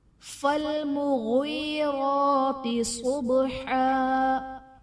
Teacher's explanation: را پر کھڑا زبر ہے تو را کو پر پڑھا جائے گا۔ صبحا میں صاد حرف مستعلیہ پر پڑھا جائے گا، با حرف قلقلہ ساکن ہے تو یہاں پر قلقلہ خوب ظاہر ہوگا۔ · فالمغیرات میں یا ساکن سے پہلے زیر ہے، یا مدہ کا قاعدہ، اور غین حرف مستعلیہ ہے تو اسے پر پڑھا جائے گا